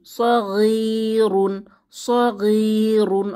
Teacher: ইয়ামাদ এসেছে একালিফ টেনে পড়ব